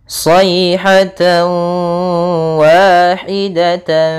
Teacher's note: tanwin bertemu dengan huruf wau cara membacanya adalah tanwinnya kita masukkan kepada huruf wau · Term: idgham